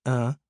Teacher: For example, a hook under an a pronounced uh and a hook under a double a pronounced uh when one pronounces a nasalized vowel. Air passes through the nasal passage so as to give the vowel a soft, slightly ringing sound.